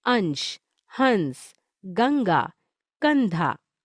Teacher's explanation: अनुस्वार, इसका उच्चारण मुख्यतः नाक से होता है,